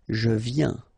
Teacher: Final S not pronounced, okay? And when you combine this IEN, you get this yin, yin. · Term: yin sound